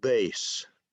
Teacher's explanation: remember that the letter B is voiced. So I say bass, and you can hear the sound even before my mouth opens.